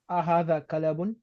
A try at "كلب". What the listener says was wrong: كلب is not كلب. That's incorrect. It's not kalabun. It's look when I write, you'll see it. Kalbun. Makes a big difference. So the lam will have a sukoon, right?